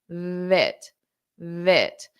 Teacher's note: for your V your teeth are touching your bottom lip and you push out the sound